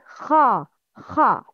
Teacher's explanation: Kha is always mufakham. Mufakham means heavy sound.